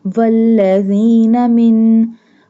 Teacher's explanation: We do gunna on noon because it has a jazm and pink color. Every word in the colorful Quran Majid which have pink color, we do gunna on that word.